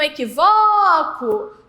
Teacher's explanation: Qual é a sílaba mais forte? É o vó. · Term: sílaba tônica